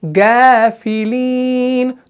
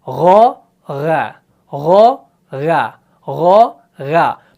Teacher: تو گاف نہیں پڑھنا ہے بلکہ غا پڑھنا ہے